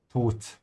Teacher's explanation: The D in German is a sound somewhere between the D you know in English and the T you know. It's a little bit closer to a T, yeah, so Tod.